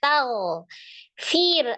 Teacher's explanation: hurufnya tag fir ada ro sukun sebelumnya kasr di huruf Fa ro sukun sebelumnya kasrah dibacanya tipis